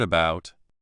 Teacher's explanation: The first part which is not stressed has the schwa sound